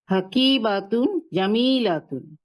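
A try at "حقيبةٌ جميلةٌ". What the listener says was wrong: দেখেন আপনার বা এবং লার মধ্যে একটু টান পড়তেছে, টান পড়বে না। হাকিবাতুন জামিলাতুন বলেন।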